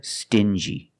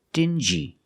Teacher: these two words have the regular n Sound plus the J like juice together